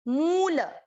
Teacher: same यहीं पे मूल, मुंह की मात्रा, म की मात्रा बड़ी है ना, मूल, ल पूरा इसलिए ल में अ मिक्स कर दिया